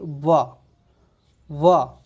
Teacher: नीचे वाला जो ओठ है ऊपर वाले दांतों को स्पर्श कर रहा है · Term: दंतोष्ट व्यंजन